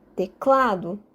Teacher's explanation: Clá é a sílaba mais forte. E, neste caso específico, trata-se da penúltima sílaba, a sílaba mais intensa. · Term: sílaba tônica